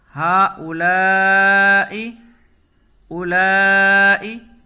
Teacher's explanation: یہاں لام کو کھینچ کر کے پڑھیں گے، حمزہ اسی کلمے میں ہے